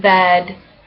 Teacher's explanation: mid, front, unrounded, lax, like in bed